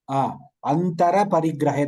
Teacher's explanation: Antar Parigrahe you should not say. Like Hindi, that Ra should be fully pronounced.